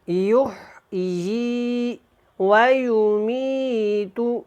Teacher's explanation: یہ یا کے نیچے کھڑی زیر ہے، اس کو ی کر کے ادا کریں، لمبا کریں۔